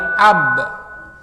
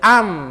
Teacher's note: Sama-sama satu daerah artikulasi, sama-sama satu makhraj, yaitu di antara dua bibir yang dirapatkan